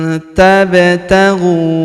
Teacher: Huruf nun sukun bertemu huruf ta, maka nun sukunnya melebur ke huruf ta, kita baca dengung dan samar. Dengungnya kita tahan 2-3 harokat.